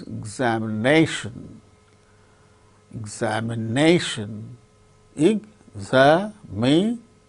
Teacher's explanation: So, fourth syllable gains primary stress, more importance. Another word also, another syllable also gains little bit less importance, xa, xa, xa.